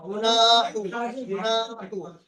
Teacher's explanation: শুধু মাঝখানে নুনটা টান হয়, নুনটা শুধু টান দিয়েছি।